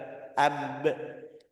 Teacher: Ini bibir bawah sama bibir atas ketemu. Jadi makhrajnya dari antara dua bibir.